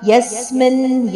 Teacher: ಯಸ್ಮಿನ್ ಯದ ಮೇಲೆ ಆಘಾತ ಇದೆ.